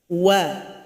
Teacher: Dari bibir bawah dengan bibir atas yang bertemu dan dimonyongkan. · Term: huruf waw